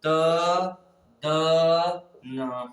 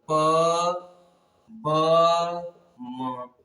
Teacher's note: थोड़ी हवा अंदर ले और थोड़ी सी ही हवा बाहर निकाले तो यह क्या होगा, अल्प प्राण